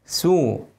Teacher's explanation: السين ضمها وخليها مرققه